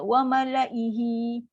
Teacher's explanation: Kita baca hamzah ni baca satu harakat je. Jangan baca ihi.